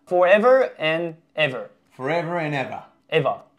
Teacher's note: dropping the ARs at the end this is very true in an Australian accent